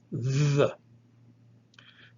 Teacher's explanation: it is a voiced dental aspirate